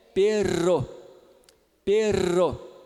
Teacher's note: esse é o vibrante múltiplo alveolar sonoro